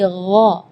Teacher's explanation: kalau ga itu dia makhrajnya dari lidah. Ya, tapi kalau huruf ghain itu dari bagian tenggorokan